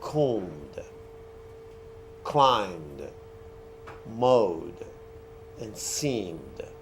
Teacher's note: Like you say, if the ending of a word is what? A voice sound. The D or ED that you add, it's pronounced as D. Like combed, climbed, mowed, and seemed.